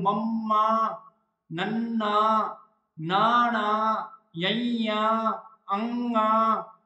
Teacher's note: ਬਾਕੀ ਜ਼ਿਆਦਾ ਆਵਾਜ਼ ਕਿ ਚੋਂ ਆਊਗੀ ਨੱਕ ਚੋਂ ਆਊਗੀ ਤੇ ਜਿਹੜੀ ਇਹਨਾਂ ਧੁਨੀਆਂ ਨੂੰ ਉਚਾਰਨ ਸਮੇਂ ਸਾਹ ਦੀ ਜਿਹੜੀ ਹਵਾ ਹੈਗੀ ਉਹ ਨੱਕ ਦੇ ਰਸਤੇ ਬਾਹਰ ਆਉਂਦੀ ਹੈ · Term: ਨਾਸਕੀ ਧੁਨੀਆਂ